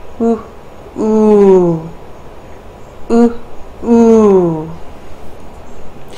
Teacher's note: labial like a kiss let the sound come to the front of the mouth